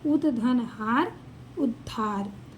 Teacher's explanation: ह हो हो हो जा अगर त द के बाद ह हो हो हो तो त द के स्थान पे द हो जाएगा। आधा द हो जाएगा और ह के स्थान पे ध हो जाएगा।